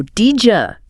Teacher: D plus Y often makes a J sound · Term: palatalization